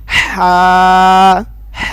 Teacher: حلق کے درمیان والے حصے سے ادا ہوتا ہے